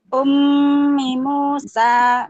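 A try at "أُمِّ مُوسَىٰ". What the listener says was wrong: Nah, kurang tahan sedikit lagi. Ah, itu adalah sifat atau apa namanya, karakter hak dan mustahaknya mim bertasdid, Bu.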